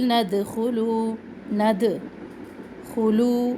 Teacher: दाल साकिन को हमने हिलाना है क्योंकि हरूफ कलकला में से है। क़ाफ तो बा जीम दाल, 5 हरूफ जब इनके ऊपर साकिन आ जाए तो फिर ये हिला के पढ़े जाते हैं।